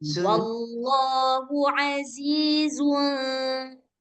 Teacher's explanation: ketika dia dimasukkan ke ikhfa, nah lidah kita ini yang tadinya zu pelan-pelan berganti ke huruf nun